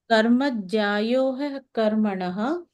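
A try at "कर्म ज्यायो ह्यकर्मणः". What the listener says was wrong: He akarmanaha will become hyakarmanaha. Karma jyayo hyakarmanaha.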